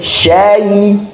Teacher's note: Maka jangan sampai syaitoni, shin diutamakan sempurnanya fathah, jadi sya. Kemudian ya sukun seperti kasrah, dia meringis, syai.